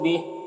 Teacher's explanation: यहाँ पर वक्फ करेंगे तो हा का खड़ा ज़ेर सुकून से बदल जाएगा